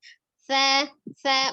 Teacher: tempat keluar huruf sa itu ujung lidahnya ada di ujung gigi seri atas. Sa, menempel lepas.